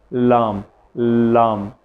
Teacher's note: جب آپ ادا کرتے ہیں لام کو، تو آپ کی زبان کی نوک، یا ہماری زبان کی جو نوک ہے، یہ اوپر تالو سے ٹچ ہو جاتی ہے۔ لام، لام، ٹھیک ہے، لا، لا، جب ہم پڑھتے ہیں لا تو ہماری زبان کی نوک اوپر تالو سے لگ جاتی ہے۔